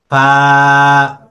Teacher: নিচের ঠোঁটের পেটটা উপরে দুই দাঁতের আগাতে লাগবে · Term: 14 নাম্বার মাখরাজ